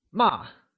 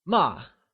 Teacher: This tone will now be referred to as the falling tone, or the fourth tone. Note that scold translates to ma, and is pronounced using a falling tone.